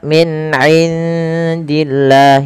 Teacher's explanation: di sini suara nunnya disamarkan ke huruf dal karena ia ada bacaan ada bacaan ikhfa, yang mana ikhfa itu cara membaca antara izhar dan idgham.